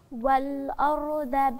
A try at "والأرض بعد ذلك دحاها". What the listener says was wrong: أيوة، أنا خليتك تبتديها عشان أنت هتقلبي لي الضاد دال، أنا عارفة من أخطائك الشهيرة.